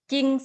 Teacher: แต่เวลาออกเสียงเราออกเสียงแค่เสียงจอจานไม่ออกเสียงตัวรอ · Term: คำควบกล้ำไม่แท้